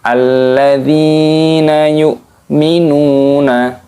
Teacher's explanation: ada Ya Sukun dan huruf sebelumnya berharakat kasrah dibaca panjang dibaca Dua harokat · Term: Mad Thobi'i